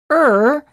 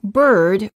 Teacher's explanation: the lips are slightly rounded the tongue is tense and at a mid-level position and the tip of the tongue is curled up and pulled back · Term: ER sound